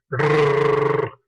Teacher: el sonido de la R en español, un sonido trinado, un sonido como un gorgojeo